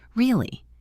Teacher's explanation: with my voice going down flat and firm, it might mean I am disappointed or sarcastic